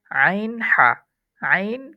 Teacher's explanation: হা এটা মাখরাজ হচ্ছে হলকের মধ্যখান থেকে